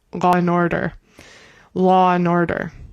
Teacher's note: it sounds like people say an R on the end of words like lur and order.